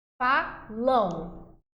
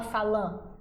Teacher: Tanto an quanto em, beleza? Em final de palavra, eles vão representar ditongos nasais.